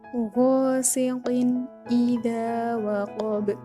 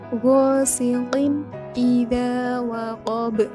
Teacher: huruf qaf yang berharokat tanwin bertemu dengan huruf hamzah, maka tanwinnya dibaca dengan jelas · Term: idhar